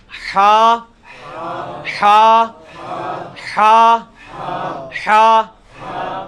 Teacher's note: حلوائی والا جو ہا ہے، یہ وسط حلق سے یعنی حلق کے درمیان سے نکلتا ہے. یہ کبھی آپ وہ گلے والی ٹافی کھائیں نا، وہ والی آواز ایکزیکٹ بالکل کلیئر وہاں سے جو نکلتی ہے نا، یہ ہا کا مخرج وہی ہے.